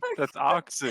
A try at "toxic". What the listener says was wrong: The Californians don't say the T